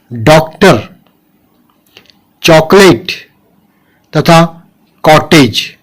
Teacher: इनको बोलते समय हमारा आधा मुंह गोल खुलता है, जीभ झटके से हमारे तालू से टकराती है। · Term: अर्धचंद्राकार आगत ध्वनि